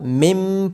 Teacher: نون ساکن کے بعد با ہونے کی وجہ سے اقلاب ہوگا. نون ساکن کی آواز میم میں بدل جائے گی. اس کو مم پڑھا جائے گا.